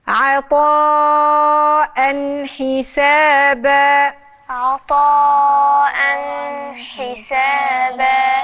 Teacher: لازم هنا نون التنوين تظهر في عطاء، ولانه جاي وراها حرف من حروف الازهار، الحروف الحلقيه اللي لازم تظهر فيها النون بتاعه التنوين او النون بتاعه النون الساكنه. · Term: الإظهار